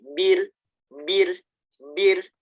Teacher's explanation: Dia hanya sekali tek, tek gitu, jangan banyak banget.